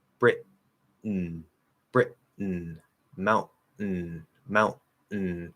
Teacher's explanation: There's a sort of a range of possibilities here, but what we'll commonly do is we'll eat that vowel, we'll drop that vowel, we'll stop the T, and then just release the N.